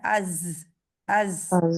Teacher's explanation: जा में सीटी पाई जाती है,